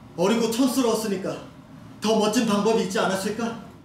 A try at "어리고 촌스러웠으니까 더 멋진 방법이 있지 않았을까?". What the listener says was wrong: 발음이 좀 웅웅 이렇게 되는 것 같아요.